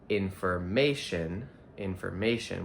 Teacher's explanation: We stress the third syllable. We have to stress the um O in information.